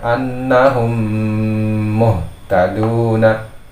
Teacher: pada hukum mim sukun ini ditutup secara sempurna